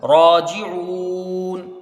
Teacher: را کو ایک الف کی مقدار کھینچ کے پڑھا جائے گا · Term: مد عارض